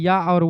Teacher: अर्धस्वर, अर्धस्वर semi वावेल कहा जाता है या और वा को। ये आधा स्वर होते हैं आधा व्यंजन होते हैं, क्योंकि इनका उच्चारण कभी स्वर जैसा होता है तो कभी व्यंजन जैसा होता है।